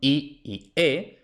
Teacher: es la parte frontal de la lengua la que sube o baja, y esas son I y E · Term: vocales frontales